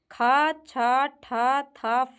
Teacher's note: ख, छ, ठ, थ, फ जो है महाप्राण और अघोष हैं।